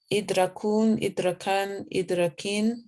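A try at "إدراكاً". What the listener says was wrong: No. Idrakun. You have to keep the alif there, right? You said idrakun. No, idrakun.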